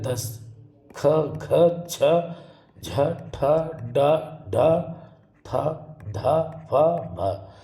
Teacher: इनमें इनको उच्चारण करते समय मुख से जो है, फेफड़ों से जो वायु है अपेक्षाकृत अधिक निकलती है, इसलिए इनको महाप्राण व्यंजन कहते हैं।